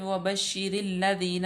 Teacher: रा को लाम में मुदगम कर देंगे, लाम मुशद्दद है, लाम मफ्तू भी है।